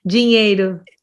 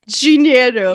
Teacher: you put like a J sound for the D